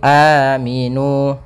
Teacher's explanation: Asalnya aminu, tapi karena dia huruf hamzah ya dibadalkan, diganti untuk menjadikan panjang, maka dia menjadi aminu. Panjangnya a 2 harakat sebagaimana mad tabi'i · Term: mad badal